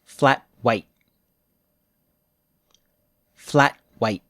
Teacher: At the end of a word, we usually don't release the t sound. The tongue just stops.